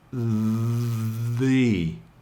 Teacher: try to pronounce it the with the long E sound